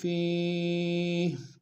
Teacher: فیہ میں یا مدہ ایک اسم دار میں کھینچیں گے، ہا کو وقف میں جزم سے بدلیں گے